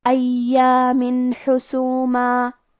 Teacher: حاء حروف الاظہار میں سے ہے، تو ہم یہ تنوین کو ظاہر کریں گے اور بغیر غنہ سے یہ حکم کو ادا کریں گے